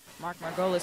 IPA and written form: mɑːrˈɡoʊlɪs (Mark Margolis)